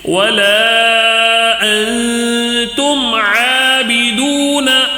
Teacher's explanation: انتم میں نون ساکن کے بعد تا آیا ہے تو اس کے لیے کیا ہوگا قاعدہ، یہاں پر نون ساکن کا اخفا ہوگا، یہاں پہ غنہ کریں گے